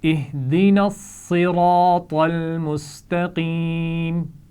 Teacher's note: نون کے بعد صاد ہے جس پر شد ہے تو اس کو پیچھے نون سے ملایا جائے گا، اور اسی طرح صراط کی طا کے بعد آگے لام پر جزم ہے تو اس کو پیچھے طا سے ملایا جائے گا، تو یہ تینوں الفاظ ملا کر پڑھے جائیں گے۔